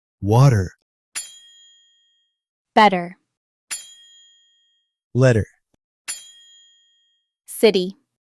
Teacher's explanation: In American and Canadian English, if a T is between two vowels, we turn it into a soft D. Water becomes water.